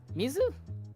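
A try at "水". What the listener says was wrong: Oh, you said miso. It sounded like you said miso, and I'm like, nah, that's not water.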